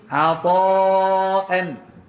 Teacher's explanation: Ain sengau tak betul. Orang Arab baca ain ni keluar ke tengah hangkung tanpa naik ke hidung.